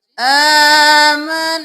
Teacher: الف مدہ ہے کھینچے، نون پہ تشدید ہے غنہ